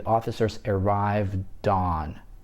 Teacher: как я соединяю согласный звук «д» с гласным последующим «а»